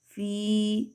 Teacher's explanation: یا سے پہلے زیر آ گئی تو یا مدہ کریں گے